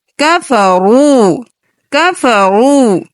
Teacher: رو کو اوپر پڑھیں گے کیونکہ رو کے اوپر پیش ہے اور یہ واو مدہ ہے، ایک الف کے برابر کھینچیں گے